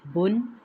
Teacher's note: اس کو ادا کرتے ہوئے ہم نے بون نہیں کہہ دینا، یہ مجہول طریقہ ہے جو کہ غلط ہے۔ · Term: ضمہ تعین